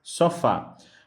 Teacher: a palavra sofá, sua última sílaba, o fá, ela é a mais forte. · A palavra sofá, ela é oxítona. Então, a palavra oxítona, ela vai ter, por obrigação, que a sua última sílaba seja a mais forte, ou seja, a tonicidade esteja na última sílaba